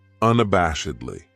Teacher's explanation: This adverb has 5 syllables, and the stress is on that third syllable, that bash, unabashedly. That second syllable has that schwa, that sound, unabashedly.